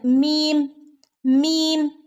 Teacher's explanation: രണ്ട് ചുണ്ടുകൾ ചേർന്നിട്ടാണ് മീം മീം എന്ന് നമ്മൾ ഉച്ചരിക്കാറുള്ളത്